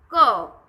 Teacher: ક ની સાથે આપણે અ બોલીએ છીએ, ફક્ત ક નથી બોલાતો એકલો. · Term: વ્યંજન